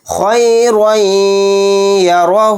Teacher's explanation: یا پر تھوڑی دیر آواز کو روک کر غنہ کرنا ہے